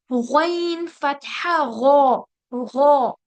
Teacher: इसमें खराश होगी और उसके साथ साथ ये हैवी भी होगा।